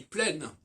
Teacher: Il se rend compte que le N de plein ne s'entend pas et qu'il ne s'entend qu'au féminin.